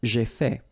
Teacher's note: final T is not pronounced